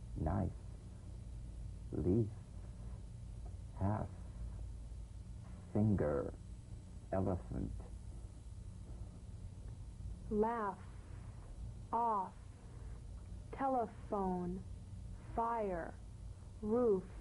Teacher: The F is a cognate to the V, the unvoiced fricative labiodental. Upper teeth to lower lip, just like the V. Now, feel the V, then turn off the voice and continue in a whisper.